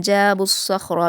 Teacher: जाबुस्सख़्र, यहाँ भी स्वाद ख़ा और रा तीनों को पुर पढ़ा जाएगा और रा को पुर पढ़ते हुए हम जल्दी पढ़ेंगे क्योंकि इस पर हरकत है।